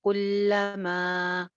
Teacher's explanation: एक अलिफ लंबा क्योंकि आगे हमजा आ रहा है। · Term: मद